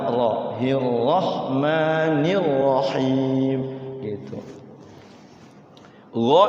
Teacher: Allah ini sebenarnya dia ee tafkhim ya tafkhim ya tebal